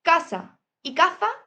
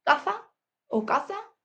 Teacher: seseo, es decir, casa y caza se pronuncian igual. Aquí en Andalucía, caza o caza, pero igual.